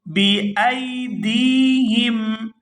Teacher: یہاں دال کو یا ساکن کے ساتھ ملائیں گے تو کھینچ کر ادا کریں گے، کیونکہ یہ یا مدہ ہے